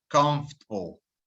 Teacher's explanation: this word, just like vegetable, has an extra vowel in there that we don't need to pronounce.